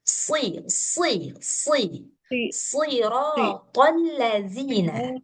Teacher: Jadi dia itu sebenarnya mirip sin tapi tebal gitu. E terus anginnya jangan terlalu banyak. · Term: Shad